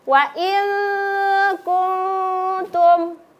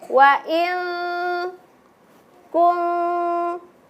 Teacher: ketika nun sukun bertemu dengan huruf kaf, kemudian nun sukun bertemu dengan huruf ta, maka nun sukunnya disamarkan, dibaca selama 2 ketukan